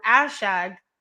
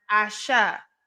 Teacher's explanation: the word ashag which has a g at the end was pronounced asha without the final g